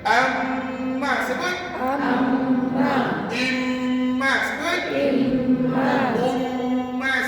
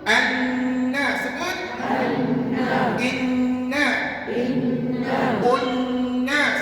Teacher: Mim tadi tutup bibir, nun tak payah guna bibir. Nak sebut nun hanya guna hujung lidah.